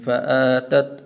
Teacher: حمزہ کے اوپر کھڑی زبر ہے تو اس کو 1 الف کے برابر لمبا کرتے ہیں